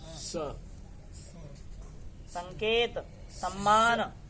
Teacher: दंत सकार दांतों से किया जाता है। सीधा जीव लगाना, सीधी जीव को लगाना दंत में।